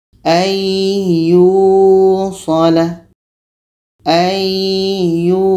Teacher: Jadi ini hukumnya dengung, idgham bi gunnah.